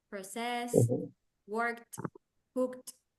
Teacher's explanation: Recuerden que las palabras en inglés que terminan en ed se pueden pronunciar de diferentes maneras. Estas suenan como una T al final.